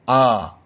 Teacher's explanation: Maka lam makhrajnya atraful lisan, la li lu al. Dan hamzah a, aqsal halq.